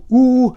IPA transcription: uː